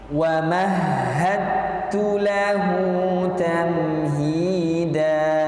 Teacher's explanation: Ada wa mahadtu, seolah-olah hanya ada huruf ta. Karena huruf dal diidghamkan, dileburkan ke makhraj huruf ta, yang sejatinya dua huruf tersebut adalah satu jenis. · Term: mutajanisani